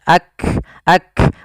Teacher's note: Diawali kaf itu memiliki sifat hams juga sebagaimana ta, dan kaf memiliki sifat yang namanya syiddah juga, adanya penahanan di dalam suaranya. Maka dia kita tahan dulu suaranya baru dialirkan nafasnya